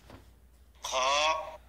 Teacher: খ এ হরফ মোটা উচ্চারিত হবে বাংলা খ এর সাথে আকার প্রকাশ পাবে না